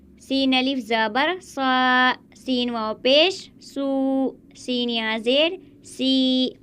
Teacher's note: زیادہ نہیں کھینچتے، ایک الف کے برابر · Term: حرف مدہ